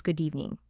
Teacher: The d blends into the e